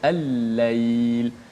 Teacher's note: Jadi dibaca dengan idgham. Lam itu dimasukkan ke dalam huruf. Dan tandanya juga kalau huruf yang idgham diletakkan tanda tasydid di atas huruf-huruf 14 huruf lam syamsiah itu.